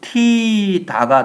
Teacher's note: 묻히다라고 되어 있는데 여기 나오는 디귿하고 히읗이 축약되어서 첫 번째 단계의 발음은 뭐가 되냐면 무티다가 돼야 돼요. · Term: 자음 축약